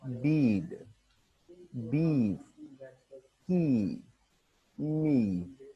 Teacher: High front vowel, that is E